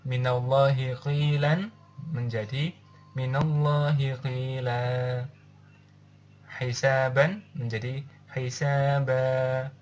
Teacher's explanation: Dan mad iwad ini terjadi ketika bacaan waqaf. Nah, panjang bacaan mad iwad yaitu dua harokat. Dan cara membaca mad iwad adalah dengan cara menghilangkan tanwinnya lalu menggantinya menjadi huruf asli, seperti halnya cara membaca hukum mad tabi'i.